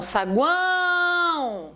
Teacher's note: Veja que o A é que é a tônica. E é a tônica nasal.